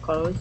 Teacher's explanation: THS is kind of a hard sound, so you naturally just make an S sound. Clothes. I don't usually say clothes.